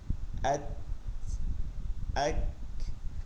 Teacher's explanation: ইতে দেখবেন এক ধরনের গ্যাস ছাড়ে মানে করে ওঠে ঠিক ঐরকম হরফের শেষে গিয়ে হালকা একটু বাতাস বের হয়ে আসে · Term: হামস